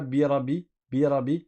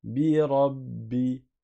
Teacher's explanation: il y a une shadda, ça veut dire qu'on reste appuyé sur le ba. C'est comme si tu avais un ba avec soukoun suivi d'un ba avec kasra.